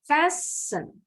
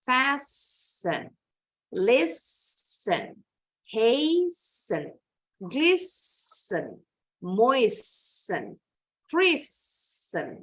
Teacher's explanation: Ternyata penekanannya, stressingnya ada di suku kata pertama. Jadi ditekan bacanya.